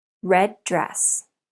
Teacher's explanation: we have two D sounds together so the two words share the sound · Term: linking two consonants